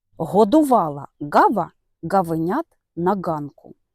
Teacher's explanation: За місцем творення звук глотковий. При його творенні корінь язика наближається до задньої стінки глотки.